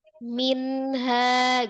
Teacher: walaupun dia izhar bacaannya jelas tapi sifat nunnya itu dia tawasut atau bainah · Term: izhar nun sukun